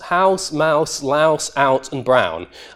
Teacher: in my variety of English, these all have an ow diphthong in them